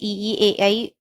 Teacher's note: अग्रस्वर जिसमें जीभ आगे को आता है